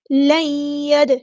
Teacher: دال ساکن پہ کلکلا ہوگا